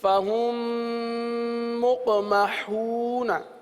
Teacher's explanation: دو حرف نہیں پڑھے جا رہے, میم کو میم کے اندر ملا دیا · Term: ادغام شفوی